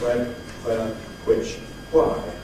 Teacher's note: the view persists that it’s more beautiful and correct to pronounce it with [ hw ] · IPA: [ hwen ], [ hweə ], [ hwɪʧ ], [ hwaɪ ]